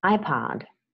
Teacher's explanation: the stress is on the first syllable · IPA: /ˈaɪpɑːd/